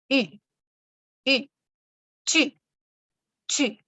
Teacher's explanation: La U no se pronuncia como nuestra U, sino que es una combinación casi que entre una U y una I. En francés esto lo pronunciamos U, U, tu, tu.